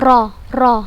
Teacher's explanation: bergetarnya ujung lidah ketika pengucapan huruf nya dengan getaran yang halus Hai sifat yang special ini hanya terdapat pada huruf ro o